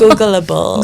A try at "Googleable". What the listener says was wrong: Google. Not Googa.